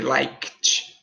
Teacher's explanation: Você vai falar esse final como se fosse um K e um T.